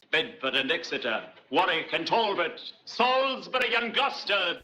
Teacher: The tapped R of old RP, and some classically trained actors, which Americans sometimes indicate in spelling as ‘veddy British’